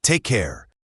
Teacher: Take has a long A sound, and care has that rounded R sound. Say it with a warm, friendly tone.